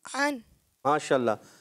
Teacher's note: اچھا پیارے بچے، آپ کی عین کی ادائیگی جو ہے نا وہ درست نہیں ہے. عین آپ حمزہ جیسا پڑھ رہے ہیں، تو آپ حلق پہ زور دیں